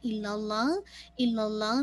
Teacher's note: इल्लाल्लाह में लामे जलाला हैवी रखिएगा